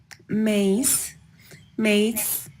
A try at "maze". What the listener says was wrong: Mace, maze. So I think in lesson 20, your focus is that Z, making sure that you're pronouncing that with a little bit more vibration than what you're doing. Lies, zip, zoo, maze, Eliza.